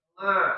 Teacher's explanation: Dari qaisunnya tadi gitu ya, maaf di Indonesia kayak misalkan huruf ain ya di Jawa gitu ya. A gitu kan masuknya ke hidung gitu